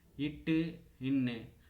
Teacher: நாவின் நுனி அன்னத்தின் நுனி